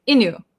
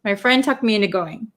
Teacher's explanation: if we're going to say very quickly, we might skip over the T sound in into. So sometimes when we talk fast, it sounds like inu.